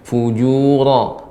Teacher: huruf ra lebih ditebalkan Ibu.